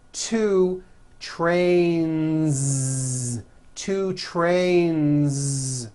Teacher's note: Two trains with a voiced Z ending.